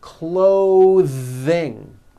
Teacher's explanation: notice how my tongue comes out in the middle of the word and the th sound is pushed out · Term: voiced th